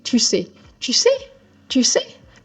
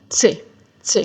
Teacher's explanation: one situation that is so common in spoken French where the U disappears in front of a consonant as well